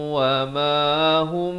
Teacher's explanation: Di sini idgham mislan saghir. Mim mati bertemu mim, dengungkan dua harakat.